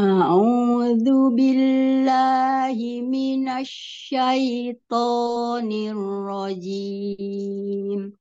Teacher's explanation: huruf Ain dijelaskan lagi dari tengah tenggorokan